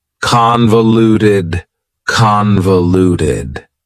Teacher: That second syllable again has that schwa sound, that reduced vowel sound.